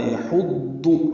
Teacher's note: ہا وسط حلق سے ادا کریں گے، ضاد پر پڑھیں گے اور معروف طریقے سے جلدی ادا کریں گے۔